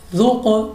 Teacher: قاف ہمارے پاس ہے ہمارا حروف کلکلا، تو ہم اس کو اپنی لوٹتی ہوئی آواز کے ساتھ پڑھیں گے